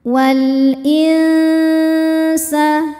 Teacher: Hamzahnya alif dengan harakat kasrah. Maka cara bacanya lam dibunyikan dengan jelas atau izhar. Oleh karena itu disebut dengan izhar qamari.